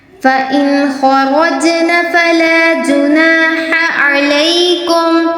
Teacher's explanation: خا پر را پر تفخیم اور جیم پر قلقلہ، یعنی ہلا کر پڑھنا ہے